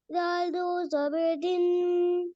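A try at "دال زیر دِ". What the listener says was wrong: This is not zabar.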